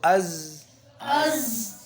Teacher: اوپر والے دانت اور نیچے والے یہ جڑے ہوں، ان کے پیچھے آرام سے تھوڑی سی زبان کی نوک لگے